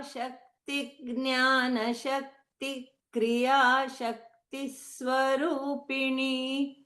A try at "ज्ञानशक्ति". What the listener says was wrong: It's not Jya. Okay?